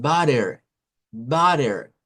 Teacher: algunos la hacen como una d y otros la hacen como que fuera un una here eh suave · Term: la flap